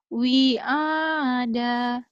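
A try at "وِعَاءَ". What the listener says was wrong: Wi-nya panjang.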